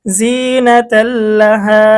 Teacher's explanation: তানভিনের পরে কিন্তু বেলাগুন্নার হরফ লাম এসেছে, তাহলে গুন্না ছাড়া মিলিয়ে পড়তে হবে। জিনাতাল, লাম জবর লা, হা আলিফ জবর হা, জবরের পরে আলিফ মধ্যে তবাই জিনাতাল্লাহা। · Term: বেলাগুন্নাহ